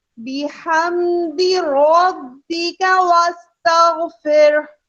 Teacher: बा में रॉ जबर में है, बा मुशद्दद से मिलाना है तो रॉ की आवाज मोटी ही अदा करनी है